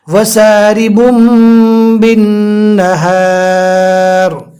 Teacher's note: جزم والے نون کو اور تنوین کو میم سے بدل کر پڑھیں گے